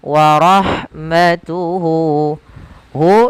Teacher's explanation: maka kita panjangkan hunya dua harakat · Kemudian pada lafal warahmatuhu, lafal ha ketika dia sukun, maka huruf ha-nya itu dialirkan nafasnya, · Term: mad silah qasirah, mad silah qasira